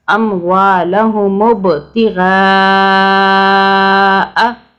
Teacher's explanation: اب یہاں پہ ہم نے قلقلہ کیا، با کا حرف قلقلہ کا ہے، یعنی کہ ہم نے طاقت سے پڑھنا ہے